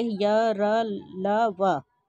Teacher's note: स्वर और व्यंजन के बीच स्थित है। जो जीभ, तालु, दांत और ओठ को परस्पर सटाने से उच्चारित होते हैं, किंतु कभी भी पूर्ण स्पर्श नहीं होता है। यह अंतस्थ व्यंजन जो है जीभ, तालु, दांत और ओठ को सटाने से होता है, किंतु पूरा स्पर्श नहीं होता है, अतः ये अंतस्थ व्यंजन अर्धस्वर भी कहलाते हैं।